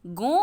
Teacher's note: गो बोलने में आवाज़ मुंह और नाक दोनों से आ रही है